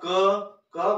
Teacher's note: अपन जैसे ही फेफड़ों से बोलते हैं तो वो कहीं न कहीं, जैसे क, अब मैंने बोला क बोला तो क मेरे कंठ से रुक करके बाहर निकला है